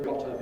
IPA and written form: ˈgɒtə (got to)